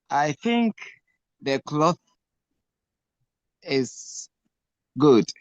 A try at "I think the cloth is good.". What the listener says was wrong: Okay, so please say the sentence again, paying attention to your TH pronunciation. I think the cloth, excuse me. I think the cloth is good.